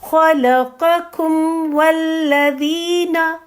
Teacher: خلقکم والذین، کم والذین، اس طرح، ٹھیک ہے. کم میم ادا ہوگا، دونوں ہونٹ ملیں گے، ہلکی سی فریکشن آف سیکنڈ کے لیے ہو سکتا ہے گنگناہٹ سی بھی محسوس ہو، وہ میم کی گنگناہٹ ہے، غننے کی گنگناہٹ نہیں ہے